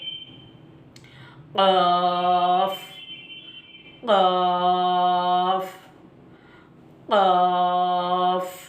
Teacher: زبان کی جو جڑ ہے اوپر کے تالو سے لگا دینا ہے